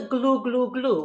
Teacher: the g gets the back of the tongue going the l gets the front of the tongue going you've got the tongue working even a little bit more than